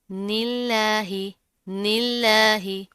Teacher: इसको आपने दूनिल्लाही, निल्लाही इस तरह नहीं करना, मोटा नहीं करना। लफ्ज़ अल्लाह से पहले ज़ेर आ रही है, तो इसको बारीक पढ़ेंगे। निल्लाही, निल्लाही।